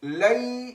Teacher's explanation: لئی کو ہم نے تھوڑا سا کھینچا ہے کیونکہ یا ساکن سے پہلے لام پر زبر آئی ہے، اسی لیے یہاں پر ہم اسے کہیں گے یائے لین، اس کو بھی تھوڑا سا کھینچ کر پڑھیں گے۔